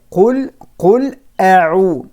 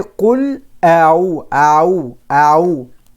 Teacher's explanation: There are two letters, a from the bottom of the throat, ayn from the middle of the throat. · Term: Hamza with fatha, ayn